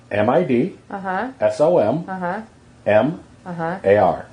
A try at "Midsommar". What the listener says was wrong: Well, your dyslexia is showing because you pronounced it with an N in there. Sumnar, I think you said. It's Midsommar.